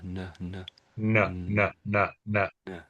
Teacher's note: it's your tongue at the front of the mouth, sort of stopping the air coming out a bit. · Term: N sound